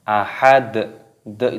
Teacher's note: Di sini dalnya berharokat dhammah tanwin, ketika ada tanda waqaf berhenti, maka dalnya di sini dimatikan. Maka cara membacanya yaitu ahad dan ditambah dengan qalqalah ataupun pantulan suara.